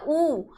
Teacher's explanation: जब हम ऊ बोलते हैं तो अपने होठों का जो आकार है वो गोल होता है